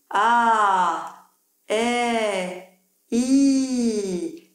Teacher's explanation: L'arrière de la langue devrait être de plus en plus haut et à partir du « eh », la langue touche les molaires sur les côtés.